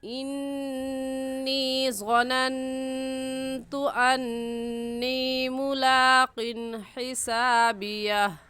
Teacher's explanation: इन्नी में नून मुशद्दद है और नून मुशद्दद पर हमेशा गुन्ना होता है, इसलिए यहाँ पर गुन्ना करेंगे।